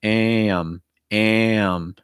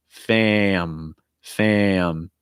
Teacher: when you have that a sound followed by a nasal like an m or an n or an ng it's going to break into two parts